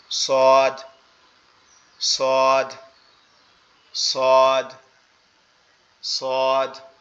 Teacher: সোয়াদটাও ঠিক একই জায়গা থেকে, আমাদের জিহ্বার আগা নিচের দুই দাঁতের আগার সঙ্গে লাগবে, লেগে উচ্চারিত হবে